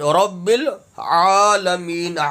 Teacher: عالمین نہیں پڑھنا، الف نہیں پڑھنا، عین پڑھنا، عین حلق سے ادا ہوگا۔ عین کھڑا زبر یہ الف لکھنے کی صورت میں، پڑھنے کی صورت میں نہیں ہے۔